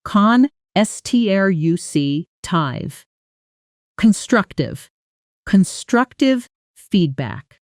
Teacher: notice the stress on the second syllable